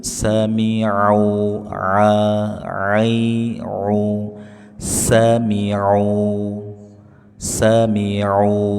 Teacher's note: ain tengah-tengah tenggorokan. Paksakan jangan mirip hamzah.